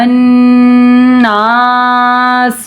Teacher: نون مشدد ایک الف کے برابر غنہ ہوگا ، نا پہ الف مدہ ہو رہا ہے ایک الف کے